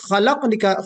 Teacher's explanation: خا نکالتے وقت ہمیں الگ بہت اندر سے نکالنا ہے، اور اس خا کے اندر ایک صفت جو میں نے آپ کو بتایا کہ استعلا کی صفت ہے، موٹا پڑھا جاتا ہے